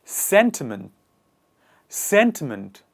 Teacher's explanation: the stress is on the first part and the initial part of the word